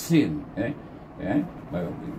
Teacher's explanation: Hamas maksudnya sifatnya nafas kita terlepas dan berangin. · sifat safir, di mana dia berdesir dengan kuat seperti suara unggas bunyinya · Mahraj huruf sin ini keluar dari antara hujung lidah membetuli tengah 2 gigi kacip atas. Iaitu sahabat-sahabat boleh cuba letakkan hujung lidah kita di belakang gigi kacip.